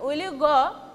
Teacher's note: with rising, my voice will be raised at the end of the sentence